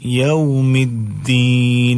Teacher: دو دال ہیں، دو کو ایک کر دیا گیا ہے، اس کو ادغام کہتے ہیں